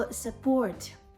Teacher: Тут наголошений другий склад. І ми чітко кажемо support, буква звук О.